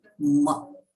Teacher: Ma is Rasva, means Halanta Ma combined with A, Ma. So it takes only one moment or one matra kala for its recitation. So we will not elongate it a lot, okay.